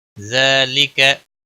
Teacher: ذال نرمی والا ہے، اس کے اوپر کھڑی زبر ہے، ایک الف کے برابر کھینچ کر پڑھیں گے